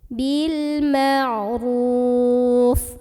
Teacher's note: dibunyikan secara Taklim karena lo ada barisnya dan barisnya di atas jadi bacanya ditebalkan pangkal lidah kita ikut naik